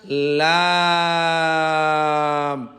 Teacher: জিহ্বার আগার কিনারা সামনের উপরে দাঁতের মাড়ির সঙ্গে লাগাইয়া লাম